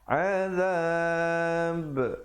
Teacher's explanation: Pastikan kita waqaf dengan betul. Kalau pilih untuk waqaf di situ, pastikan ada pantulan